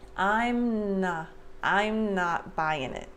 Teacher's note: Before I finish the M, before I separate my lips, I start the N sound for not.